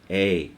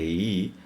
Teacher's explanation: You'll remember that I began in A and ended in the beginning of E. I did not articulate E fully.